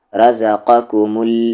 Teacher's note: رزقکم نہ را کو کھینچنا ہے، نہ زا کو، نہ قا کو، نہ کو کو، اور نہ مو کو